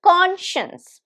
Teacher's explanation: How many syllables? Very easy to recognize. 2 syllables. Conscience. And the stress is on the first one.